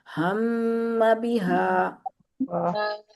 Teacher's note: हा की आवाज जो है वो सीने से आनी चाहिए, इंतहाई हल्का हा है ना ये